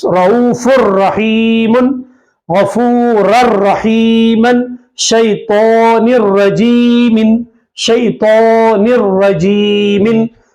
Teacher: رؤوف الرحیم میں دیکھیں فا پہ دو پیش تنوین ہے، تنوین کے بعد را آ رہا ہے، تو را ادغام بلا غنہ میں سے ہے، تو نون کی آواز کو را میں ملا دیں گے